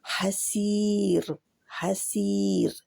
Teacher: क्योंकि इस रा के पहले या जज़म वाली है, यानी या मदिया है, तो ये रा बारीक रहेगी